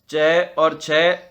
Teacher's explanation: तालु है च और छ वर्ण का उच्चारण स्थल।